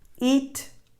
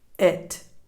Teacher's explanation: one with the tense E sound and one with the lax E sound